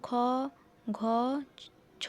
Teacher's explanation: প্রতিটি বর্গের দ্বিতীয় ও চতুর্থ বর্ণ উচ্চারণের সময় শ্বাসবায়ু অপেক্ষাকৃত জোরে ও বেশি পরিমাণের নির্গত হয় বলে এদের মহাপ্রাণ বর্ণ বলে